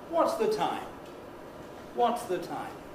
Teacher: There's an accent on what and there's an accent on time.